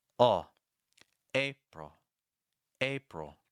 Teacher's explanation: we're ending on a dark l sound the front of your tongue is actually down here the back of your tongue is a little high and you want lots of air to pass through oh April